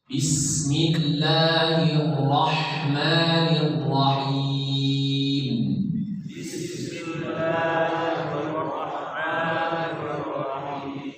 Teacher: Ya, bis sinnya dialirkan. Tak boleh bis, tak boleh ditahan, dialirkan.